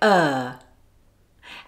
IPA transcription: ɜː